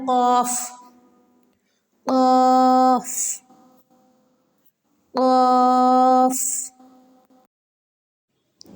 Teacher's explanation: قاف قاف، زبان کی جڑ اور اس کے مقابل اوپر کا تالو، یہ جو ایرو دکھا رہے ہیں یہاں ہے زبان کی جڑ، زبان کی جڑ سے ادا ہوتا ہے قاف